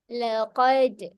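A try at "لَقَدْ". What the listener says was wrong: Jangan tambah hamzah eh belakang. Jangan laqad. Dengan bunyi de tu tak nak. De sahaja.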